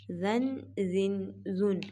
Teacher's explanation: زا 2 زبر الف زن، یہ زا ہے، زا میں سیٹی پیدا کی جائے گی، اس کو موٹا نہیں کرنا